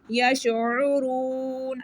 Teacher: یشعرون، عین کو گلے کے درمیان والے حصے سے پڑھیں گے، را کو موٹا پڑھیں گے، واو مدہ ہے 1 سیکنڈ اس کو کھینچ کے پڑھیں گے